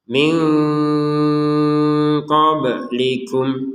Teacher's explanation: nun sukun bertemu Q kita baca dengan samar